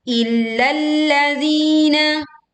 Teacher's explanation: zi dibaca panjang 2 harokat · tekan lam bertasydid di lam yang pertama, lalu juga tekan di lam yang kedua